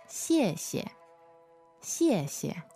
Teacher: the second one is the neutral tone so first fourth tone and then neutral